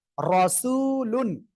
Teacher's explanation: র অক্ষরের উপরে জবর বা পেশ হলে র মোটা করে পড়তে হবে